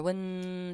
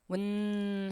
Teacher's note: when 할 때 여기 코 주변에 진동 느껴져요? 진동이 느껴져야 돼요.